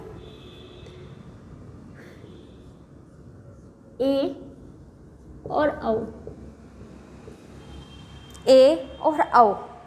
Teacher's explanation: इसमें मुख द्वार, आधा बंद रहता है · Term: अर्ध समृद्ध